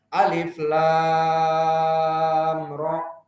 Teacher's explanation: Jangan ada yang 2 harokat alif, lam, ra. Paham? Tetapi harus 6. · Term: mad lazim